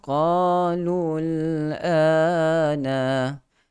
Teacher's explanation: Huruf qaf pastinya berikan sifat isti'la yang tebal. Huruf yang meninggi ke atas. Suara ditolak meninggi ke atas langit.